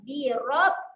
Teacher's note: Ra ni dibaca dengan ra yang tebal.